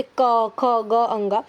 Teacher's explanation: तो क वर्ग में जितने भी 5 वर्ण आते हैं उनको हम कंठ से बोलते हैं